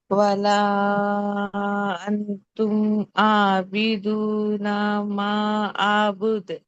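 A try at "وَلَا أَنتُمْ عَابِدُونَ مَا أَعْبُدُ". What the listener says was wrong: Correct.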